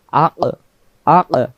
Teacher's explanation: কফের উপরে যদি সাকিন থাকে তাহলে উচ্চারণ হবে আক, আক, আওয়াজটা ভেসে উঠবে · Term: কফ অক্ষর